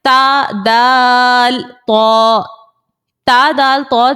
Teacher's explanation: تا دال تو جو ہے اس کو حروف نطعیہ کا نام دیا جاتا ہے, اور ان تینوں کا مخرج جو ہے وہ سیم ہے. زبان کی نوک جب سامنے کے دو دانتوں کی جڑوں سے لگے تو تا دال تو نکلتا ہے